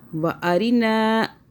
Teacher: را باریک ہو گیا، را کے نیچے زیر ہے